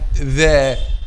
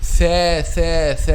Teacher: What you feel here when you put your hands here, you will feel a vibration of the vocal cords when you pronounce letter ذال, but you will not feel that when you pronounce letter th